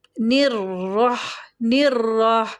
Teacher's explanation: منہ کے اندر آواز نہیں بھرنی چاہیے، رحمہ، نون کے نیچے کسرہ ہے، زیر ہے، اس کو پھر وہی دوبارہ آگے را مشددہ ہے، اس کو را سے ملا دیں گے، اور را کو اپنی حرکت کے مطابق پر یعنی کہ موٹا پڑھیں گے